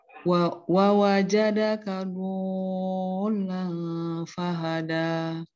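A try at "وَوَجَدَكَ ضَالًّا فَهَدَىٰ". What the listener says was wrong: Sekarang kurang panjang dodnya, itu 6.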